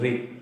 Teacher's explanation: मूर्धा और तालू दोनों को मिला के री बना